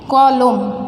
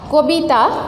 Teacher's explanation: কবিতা, এখানে দেখো এখানে ক এর মধ্যে আছে অ, এই ক এখানে গিয়ে পরিবর্তন হয়ে গেছে ওকারে পরিবর্তন হয়েছে, অ হয়ে গেছে। তাহলে এখানে কলম এই শব্দটাতে অ রক্ষিত হয়েছে, আমরা অ উচ্চারণ করছি। আর কবিতা এখানে অ হয়ে গেছে ওকারে পরিণত হয়েছে।